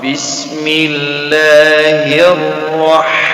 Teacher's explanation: lam nama allah di sini akan tipis kerana sebelumnya ada huruf yang berar kasrah atau baris bawah